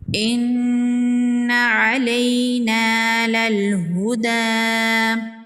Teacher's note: نون مشدد پر غنہ ہوگا، یا لین ہے، اس کو نرمی سے پڑھیں گے اور جلدی پڑھیں گے۔ الف مدہ ہے، ایک الف کے برابر کھینچ کے پڑھیں گے۔